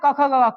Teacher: क ख ग, कंठ से बोला जाता है